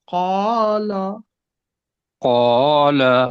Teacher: نہیں، قوف کو موٹا کرنا ہے